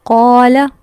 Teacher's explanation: قاف زبر الف قا، یہاں ہم قا کو لمبا کرے ہیں، لام کو نہیں کرے کیونکہ لام کے آگے الف نہیں ہے۔ تو ورڈ قال یہ غلط پروننسیشن ہے کیونکہ لام کو لمبا نہیں کرنا تھا، ہم نے کر دیا۔ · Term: حروف مدہ